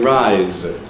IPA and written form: raɪz (rise)